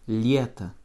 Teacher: Pour écrire lieta, qui veut dire l'été en russe, nous écrivons L, suivi d'un Y, suivi d'un T et un O. Lieta, avec l'accent tonique sur le Y, donc votre O final va se prononcer comme un petit A